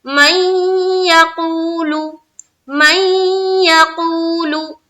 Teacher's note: तो नून साकिन के बाद ये जो या है, यूमिन के 4 हर्फ में से या है, तो यहाँ पर हो गया क्या, इदगाम नाकिस का कायदा। अब यहाँ पर इदगाम जो करेंगे गुन्ना के साथ करेंगे